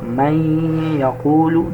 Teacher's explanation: So after Noon Sakin there is Ya, so we have to make Idghaam but with ghunnah